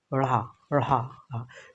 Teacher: उच्छिष्ट ध्वनि व्यंजन ऐसे व्यंजन जिसमें हम जैसे ढ़ा ढ़ा ढ़ा, इसमें हम जीभ के अगले हिस्से को एक बार ले जाते हैं ऊपर ढ़ा, उसके बाद तेजी से गिराते हैं नीचे